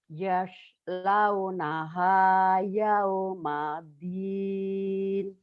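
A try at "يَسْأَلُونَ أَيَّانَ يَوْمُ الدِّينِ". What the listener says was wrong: Banyak pendek. Yas, launaha yaumaddin.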